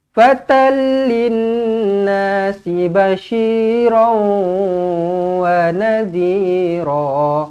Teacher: Jumpa dengan lam, tak payah dengung, masuk sahaja. Okey, tanwin jumpa dengan lam, tak payah dengung, masuk sahaja.